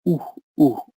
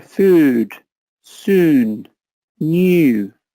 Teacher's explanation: The English U is central, and also then you use your lips as well in English.